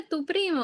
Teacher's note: se desplaza la fuerza de acentuación a primo